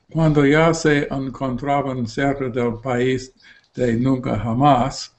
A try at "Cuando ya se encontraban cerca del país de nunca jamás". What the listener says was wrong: Tienes que abrir más la boca, ¿vale?